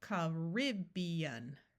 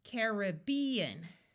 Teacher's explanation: In both of these pronunciations, the final AN is pronounced un. But in the second pronunciation, we have a clear long A sound, and the third syllable is accented.